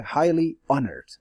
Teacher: H sound is there but the second H is not pronounced